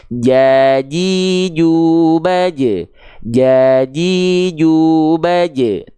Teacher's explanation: adalah huruf nih kita lihat Huruf apa nih huruf huruf Jim huruf Jim juga dilafal dari bagian tengah lidah tapi Tengah lidah untuk huruf Jim ini nempel sampai ke langit-langit di atasnya